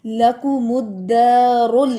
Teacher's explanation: یہ جو لام ساکن ہے اس کو آپ نے موٹا نہیں کرنا, زبان نہیں اٹھانی اوپر